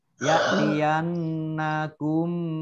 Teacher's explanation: Ya'tiyannakum, ya, dibaca mendengung 2 harokat. Kemudian nun tasdid juga dibaca mendengung 2 harokat.